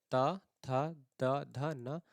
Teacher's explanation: ता, था, द, ध, न का उच्चारण करते समय जीभ ऊपर के दांतों को स्पर्श करती है। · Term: दंत्य व्यंजन